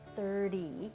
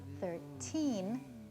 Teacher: when I say 30 there's a flap when I say 13 there's no flap it's more of a tea sound